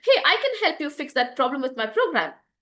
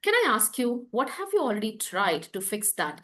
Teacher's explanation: it's gentle it's curious and it's a rising tone